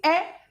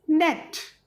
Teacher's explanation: अब ये जो ए है ये बहुत शॉर्ट आएगा, as in net.